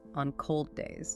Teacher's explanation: Hold that D closure just a bit longer. Don't release it fully. Then go straight into the D for days on cold days. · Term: consonant linking